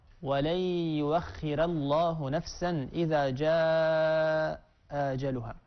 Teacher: قرأ ورش رحمه الله بإبدال الهمزة واوا: ولن يؤخر الله نفسا، ولن يؤخر الله نفسا، كما قرأ طبعا بترقيق الراء، لأن ورشا رحمه الله يرقق كل راء مكسور ما قبلها. فورش كلمة يؤخر أبدل الهمزة واوا ورقق الراء